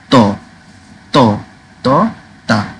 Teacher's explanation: একদম জাস্ট ত, জাস্ট ত, তা। থা না, থা না, দা না